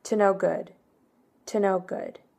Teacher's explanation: Like instead of saying is up to no good, we just say to know. So the O and the to is really reduced. And the O and no is also kind of reduced.